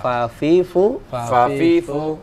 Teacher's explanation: gigi seri atasnya bertemu dengan bibir bawah